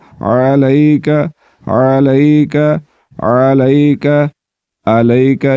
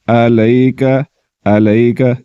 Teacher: عین کو حلق کے درمیان والے حصے سے نکالنا ہے اور حمزہ کو حلق کے نیچے والے حصے سے نکالا جاتا ہے